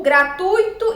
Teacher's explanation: a sílaba tônica na palavra gratuito é o U